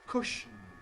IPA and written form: ˈkʊʃn̩ (cushion)